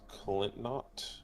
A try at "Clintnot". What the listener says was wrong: Pronounce the N a little more there, preferably.